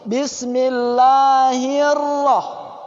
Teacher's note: dibaca tebal dibaca tebal kemudian dua getaran tapi juga jangan terlalu lama bergetar